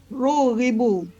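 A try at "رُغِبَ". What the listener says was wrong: Rugiba. Lampirnya fathah filmadi itu. Ya, ulangi rogiba.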